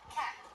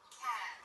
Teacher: the word cat will be a little bit shorter than the word cad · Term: vowel